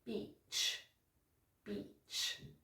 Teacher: You need to have a long E sound, okay? So I want to see you kind of smiling when you say this word.